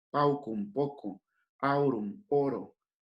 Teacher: La AU se pasa a O, a la letra, a la vocal O.